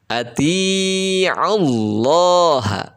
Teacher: tafkhim itu artinya tebal nah tafkhim yang dimaksud adalah tafkhim pada lafadz jalalah lafadz Allah